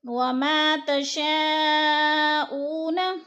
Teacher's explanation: وَمَا تَشَاءُونَ، تشاء پہ مد متصل ہے، 4 الفی مد ہے. حروف مدہ کے بعد حمزہ اسی کلمے میں ہے تو ادھر 4 الفی مد ہے، 4 الف کے برابر ہم نے اس کو کھینچ کر پڑھنا ہے.